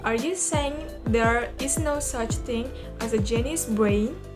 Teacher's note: this question is yes-no questions too. So the intonation is rise.